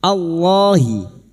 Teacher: lam jalalah yang didahului fathah kita baca tafkhim